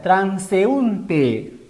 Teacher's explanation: la vocal cerrada tiene mayor intensidad y por eso se ha separado. Forma hiato, se ha tildado, mejor dicho. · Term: Hiato acentual